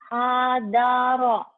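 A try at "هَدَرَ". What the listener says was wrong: Jangan dieja kalau gabung mah.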